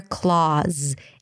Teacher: A K sound, an L, an ah. Round your lips a bit, drop your jaw. The mouth is open here, Claus. And with a Z, Claus.